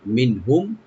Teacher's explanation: নুন সাকিন এখানে এজাহার করব, হুম এখানে মিম সাকিন এজাহার করবে, এজাহার স্বভাবিক।